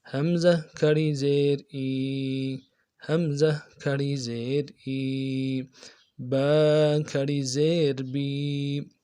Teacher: حمزہ کھڑی زیر ای، حمزہ کو نرمی سے پڑھیں گے، کھڑی زیر کو ایک الف کی مقدار میں کھینچ کے پڑھیں گے